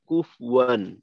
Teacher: ফায়ের পেশটা একটু অস্পষ্ট হয়ে কুফওয়ান অনেকটা জজমের কাছাকাছি চলে যায়, তেমনটা হবে না।